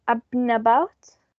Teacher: when the p is followed by n, it becomes m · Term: progressive assimilation